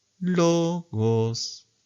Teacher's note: El agudo sube una quinta.